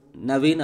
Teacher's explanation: நாவின் நுனி மேல்வாய்ப்பல்லின் அடிப்பகுதியை, மேல்வாய்ப்பல்லின் அடிப்பகுதியை தொடுவதால் நகரம் பிறக்கிறது